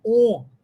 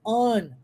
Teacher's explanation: a pronúncia não é on, fechado, como se fosse o O do português, mas on, aberto, como se fosse a pronúncia do inglês, porque é, na verdade, né?